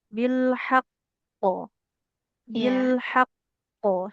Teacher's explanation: Jadi dia penekanan pada tasdidnya enggak hilang.